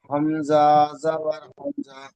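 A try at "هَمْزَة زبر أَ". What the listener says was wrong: হামজা নয়, হামজা জবর আ, আ আ।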